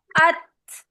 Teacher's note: अब बा तो आपको पता है कलकला हर्फ है, उसको निकाल दिया। ता, अत, जबान तालू से जाके आगे वाला जो दांत है उसके मसूड़े पे जो तालू वाला हिस्सा है उससे टकराई, और इन दो चीजों के टकराने से तादा हुआ, अत।